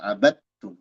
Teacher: dal idgham ke ta jadi bacanya dari ba langsung ke ta abadum dal hilang sama sekali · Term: idgam mutajanisain